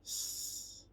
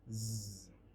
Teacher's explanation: alveolar. For the voiceless, s. For the voiced, z.